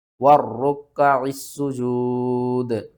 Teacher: واو را زبر ور، را کاف پیش رک، ور رک کاف زبر کا، ور رک کا عین سین زیر عس سین پیش سو، ور رک کا عسو، جیم واو پیش جو دال زیر دی، وَالرُّكَّعِ السُّجُودِ، اور وقف کی صورت میں دال کو ساکن کر دیں گے